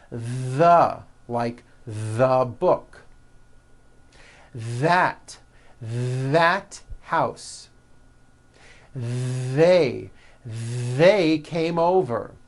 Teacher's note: That's the voiced TH. You should be able to feel a strong vibration in your throat and on your tongue. · they should all be voiced and all made with your tongue coming through your teeth.